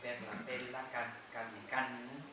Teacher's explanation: La R se asimila cuando va seguida de una consonante a la consonante siguiente